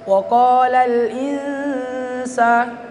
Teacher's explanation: Kita sebut bunyi nun matinya, tapi lidah ta sudah ke tempat keluarnya huruf sin. Ya, tempat keluarnya huruf sin itu adalah ujung lidah menyentuh langit-langit. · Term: ikhfa hakiki